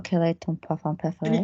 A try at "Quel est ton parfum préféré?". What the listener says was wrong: Can you hear how you're going? So it's not even pushed in enough because it's going to the break of your voice. Commit with the chest. Quel est ton parfum préféré? But can you hear the moisture there because it's in the mouth? Do it on the chest. Quel est ton parfum? Quel est ton parfum préféré?